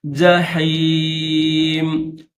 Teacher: جحیم، پہلے جیم ہے، یہ جیم کا نقطہ ہے، پھر درمیان میں ہا ہے، تو ہا کو گلے سے ادا کریں گے، حلق سے نکالیں گے